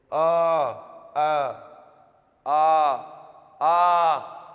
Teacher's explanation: कंठ आप लोगों का जो होता है वर्ण वो ये जो उच्चारण स्थान होता है ये आपके गले का जहां से गले से निकलती है जिव्हा जो है कहीं पर टच नहीं करती और सीधा कंठ से कंठ में वाइब्रेशन करके और वहीं से निकालती है। जैसे आ कहीं पर जिव्हा टच नहीं हो रही। सीधा कंठ से निकल रही है ध्वनि। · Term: कंठ वर्णों